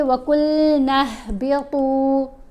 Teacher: قاف کو موٹا پڑھیں گے، نون کو ہا سے ملائیں گے، وَقُلْنَا اهْبِطُوا، تو کو بھی موٹا پڑھیں گے اور یہاں پر پیش کے ساتھ واو ساکن ہے تو حرف مدہ ہے۔